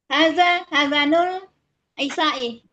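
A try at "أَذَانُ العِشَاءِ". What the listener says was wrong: Azanul panjang.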